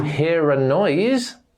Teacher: pronounce the r because the next sound is a vowel sound